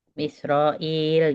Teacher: Hamzah bukan ain, bersih.